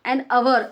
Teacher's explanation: इसमें देखिए आप एच हालांकि कॉन्स्टेंट है, मतलब नम एच से शुरू हो रहा, लेकिन इसको पढ़ते जब अपन आ की आवाज़ निकालते एच साइलेंट रहता